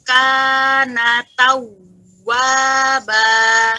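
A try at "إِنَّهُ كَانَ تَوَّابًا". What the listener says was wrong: Masya Allah. Allah barik ya.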